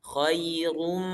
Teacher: Ketika kita baca ra, rum itu monyong rum.